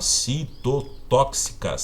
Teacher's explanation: Tem a antepenúltima sílaba tônica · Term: proparoxítonas